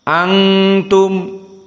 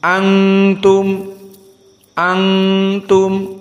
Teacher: Antum Hamzah di sini murqqaqoh Wun asakinah iltaqom maat ta bertemu Nun sakinah dengan ta menjadi ikhfa Antum dan ikhfa hukumnya dari khaisum dari hidung